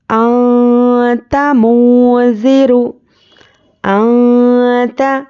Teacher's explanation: انت منذر، انت اس طرح سے ناک میں آواز کو لینا ہے. نون کی آواز کو ناک میں چھپانا ہے